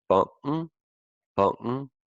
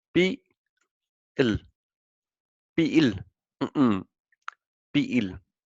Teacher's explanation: I do a small break between the first part of the word bang and the last part of the word banken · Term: glottal stop